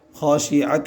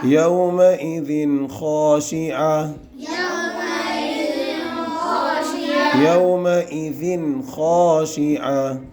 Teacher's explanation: وجوہ یومئذ خاشعہ خاشعہ یا گولتا ہے، گولتا پہ وقف کریں گے تو گولتا ہا ساکنہ بن جائیں گی. خاشعت نہیں پڑھیں گے، خاشعہ پڑھیں گے.